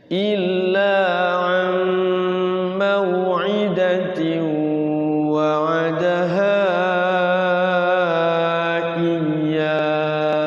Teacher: Awas, tasydidnya tidak ditahan ya, itu namanya tasydid aja. Iya, jangan iya, kalau sampai digunakan jadinya idgham bigunnah.